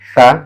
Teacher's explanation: ujung lidah menempel ujung gigi atas